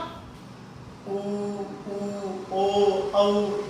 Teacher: जिनको बोलते समय जीभ का पीछे वाला भाग, पश्च, पिछला भाग क्रियाशील हो, उन्हें पश्च स्वर कहेंगे